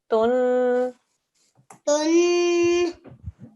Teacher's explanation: Ajinnah. And then the ta with the dhammatain, also 2-second nasal sound.